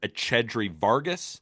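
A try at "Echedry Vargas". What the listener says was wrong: uh, soften the CH in a Shedry. It's a Shedry Vargas, not a Chedry.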